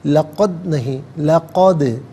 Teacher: دال ساکن ہے لیکن قلقلہ ہوگا تو آواز لوٹتی بھی محسوس ہوگی